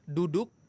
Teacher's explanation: Tapi kalau huruf dal, ujung lidah ketemu dengan pangkal gigi seri atas.